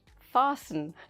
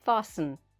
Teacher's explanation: we write fasten like this f a s t e n we say fasten like this no t sound